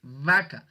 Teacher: Cuando ustedes son conscientes de esa sonoridad, de ese fonema, se junta el labio con el diente y es la V